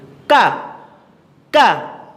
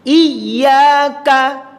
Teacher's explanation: Ketika mengucapkan kaf di video ini letaknya titiknya ada di pangkal lidah dekat anak lidah setelah makhrajnya qaf.